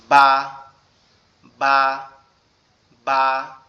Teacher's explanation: একসাথে লেগে, উপরের ঠোঁট এবং নিচের ঠোঁট একসাথে লাগবে